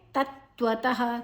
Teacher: ತ ಆದ ನಂತರ ವಿಸರ್ಗದ ಉಚ್ಚಾರಣೆ ಹ